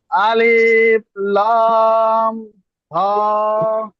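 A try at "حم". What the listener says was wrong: না ওটা হা নয় তো, ওটা মিম। না, আলিফের সাথে মিম তো একটা, এই লামের সাথে একটা মিম নিয়েছেন তো। ডাবল মিম পড়তে হচ্ছে না তো, একবার তো লামের সাথে মিমটা ধরে নিচ্ছেন।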